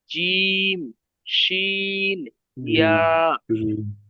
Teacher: জিভের মাঝখান সেই বরাবর উপরের তালু, একদম জিভের মধ্যখানটা উপরের তালুর সঙ্গে লাগিয়ে উচ্চারিত হবে জিম, শিন, ইয়া। ইয়া, ইয়া, জিম, শিন, ইয়া।